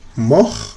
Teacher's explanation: Su pasado es mort, no se pronuncia la T.